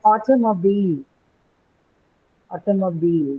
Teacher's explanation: the I letter stands for E long E not I